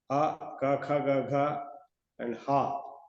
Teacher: Akuha visarjaniyaha kanthyaha. Panini says, a, ka, kha, ga, gha, and ha and visarga are coming from throat